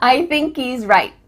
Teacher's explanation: There's no H happening here. I thinky. Thinky.